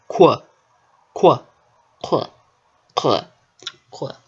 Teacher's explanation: I only did one labial consonant, and that was the K. I labialized the unvoiced velar plosive, which is the K sound.